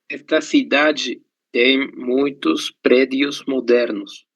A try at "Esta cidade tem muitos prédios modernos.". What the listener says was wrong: Isso, tem muitos prédios modernos.